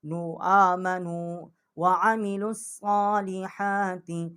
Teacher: آمنو جو یہاں پر کھڑا زبر ہے اس کو ہم نے ایک الف کھینچا ہے